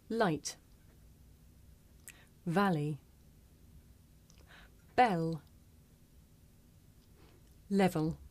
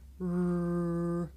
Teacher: I make the l sound with the front part of my tongue behind my teeth, and I make the r sound by making my lips come out and pulling my tongue back.